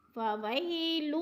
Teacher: علی طعام المسکین، فویل فوی پہ یا لین ہے، یا لین کو لمبا نہیں کرنا، جھٹکا بھی نہیں دینا۔